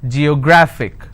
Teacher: the rules says if I have a word ending with I I need to stress on the second last syllable